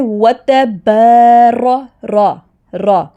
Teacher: یہاں پہ را تفخیم یعنی کہ موٹی پڑھی جائے گی